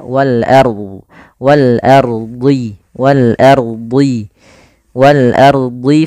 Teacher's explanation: lafal wal ardi, a-nya tipis, ro-nya tebal. Nah, jangan ar, tapi dia wal ardi, wal ardi, wal ardi, wal ardi fanfudhu.